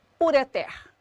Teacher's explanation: No caso da palavra ureter, a sílaba tônica da palavra ureter é o ter. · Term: oxítona